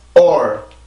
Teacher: 소리를 올려서 강세를 만드는 게 아니라 성대를 한번 긴장을 시키는데, 긴장을 시킨다라는 얘기는 목에서 올라오던 공기를 한번 이렇게 딱 막아준다라는 얘기예요. 아주 짧게 막아주고 그러고 나서 소리를 올려주면 그게 영어에서 말하는 강세라는 거예요.